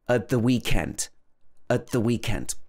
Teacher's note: with a glottal stop we don't say the t